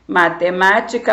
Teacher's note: classifica-se como proparoxítona porque a sílaba tônica ou a sílaba forte é a antepenúltima